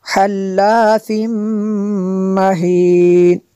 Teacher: تنوین کے بعد میم ہے حروف یرمالون میں سے، تو یہاں پہ ادغام ہوگا، اس لیے ہم نے یہاں پہ غنہ کیا۔